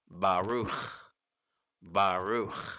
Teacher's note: instead it just comes to a closing sound of baruch bahru not baruch with a k baruch with the kh or ch sound